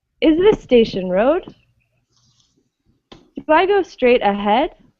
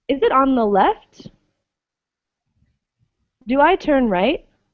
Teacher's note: Your voice starts lower and goes higher as the sentence finishes. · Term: rising intonation